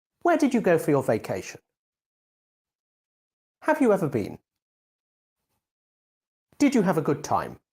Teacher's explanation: you're asking a question to find out new information in this case the question has a falling tone